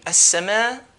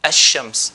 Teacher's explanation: So not al-siyam. So all of these, we're not going to pronounce the lam.